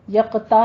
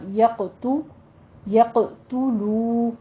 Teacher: یقتا نہیں کہنا، یقتو، یقتلو واو مدہ ہے، ہونٹوں کو گول کر کے 2 کاؤنٹ کریں · وَيَقْتُلُونَ النَّبِيِّينَ، قوف کو پر کر دینا ہے، حروف مستعلیہ ہے اور قلقلہ بھی کرنا ہے اس کے اوپر. آگے تا کے اوپر ہونٹ گول کر لیجئے